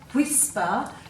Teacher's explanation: if you say whisper you can feel air after the w